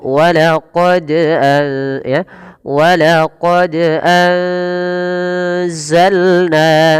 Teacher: Pada huruf dal, yang memiliki diakritik sukun, kita harus memantulkannya. Mengapa? Karena dal memiliki salah satu karakteristik yang kita sebut qalqalah.